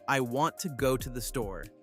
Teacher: The small words, to, the, are quick and soft.